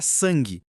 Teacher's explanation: Esse an não são duas letras independentes soando, é uma ressonância nasal única. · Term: dígrafo vocálico